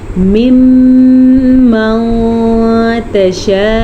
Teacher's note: मीम के ऊपर शद आ गई तो हम मीम का गुना अदा करेंगे · مد کو 5 سیکنڈ تک لمبا کرنا ہے. حمزہ پیش او اسے لمبا نہیں کرنا.